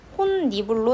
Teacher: 혼니불은 니은 첨가가 일어나긴 해요. 최종 발음이 혼니불로 되거든요.